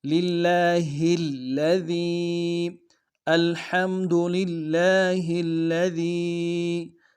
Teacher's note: للہ کی ہا کو آگے الذی کے لام کے ساتھ ملانا ہے، لام کے اوپر تشدید ہے۔